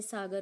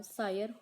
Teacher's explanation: अनेक तरह स्पर्श ध्वनियों का लोप होने पर य की श्रुति आ जाती है जैसे सागर का सायर हो जाता है अगली जो प्राकृत है